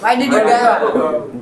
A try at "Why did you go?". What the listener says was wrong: गाओ नहीं बेटा, थोड़ा सा गो गो या why did you गो? Why did you गो?